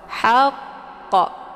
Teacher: kubra cara bacanya huruf qnya dipantulkan dengan pantulan kuat haqq namun karena di sini terdapat tasdid maka cara bacanya disempurnakan tasdidnya dulu kemudian baru diiringkan dengan bacaan Qalqalah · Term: Qalqalah kubra